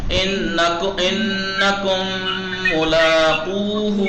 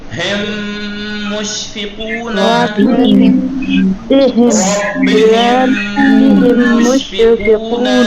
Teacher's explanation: और मीम मुशद्दद जो है वो गुन्ना के साथ अदा होगा, गुन्ना के साथ यानी नहीं, हाँ खींच के अदा होगा नाक की फिजा से, यानी नाक की फिजा से हमराह कशिश सौत, हमराह कशिश सौत आवाज की खिंचाव के साथ, सौत यानी आवाज की कशिश यानी खिंचाव के साथ।